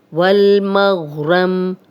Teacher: غین موٹا ہے اور میم کی زبر غین سے ملے گی، را کو موٹا پڑھیں گے اور میم پہ جزم لگا کے وقف کریں گے۔